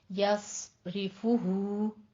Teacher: फू और हु दोनों जगह पे होंठों को गोल करते हुए अदा करना है। यस यस योस नहीं कहना, ठीक है।